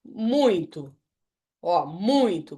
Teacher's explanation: Qual que sobressaiu aqui? O U. Então, o U é vogal e o I é semivogal.